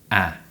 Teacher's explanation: the ah sound is a short sound produced with the tongue low and forward and the lips smiling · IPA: /æ/